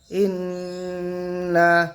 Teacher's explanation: নুনের তাসদিদ আছে, নুন ওয়াজিব গুন্না হবে